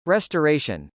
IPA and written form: r.ɛstɚˈeɪʃən (restoration)